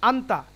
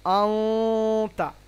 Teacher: আন্তা, কিন্তু পড়তে হবে আউতা। সরাসরি আন না হয়ে নুনটা একটুখানি লুকোবে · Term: ইকফা